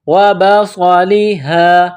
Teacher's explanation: صاد میں سیٹی کی آواز پیدا کرنا ہے، صاد کو موٹا پڑھنا ہے